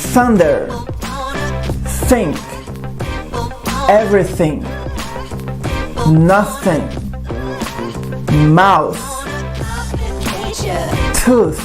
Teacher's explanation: Nesse primeiro som, que é o voiceless, além da língua entre os dentes, você vai fazer uma aspiração, ou seja, é o ar saindo.